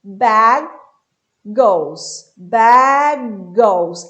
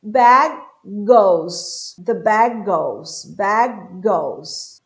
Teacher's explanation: Eu vou falar um único G e esse G, ele vai sair um pouquinho mais daqui do fundo da minha garganta